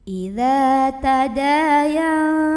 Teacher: Maka cara membunyikannya, mim sukun ini dibunyikan ditahan dulu, jadi ada dengungannya. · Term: ikhfa syafawi